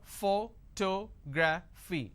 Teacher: But in this case, I stress on the second syllable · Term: word stress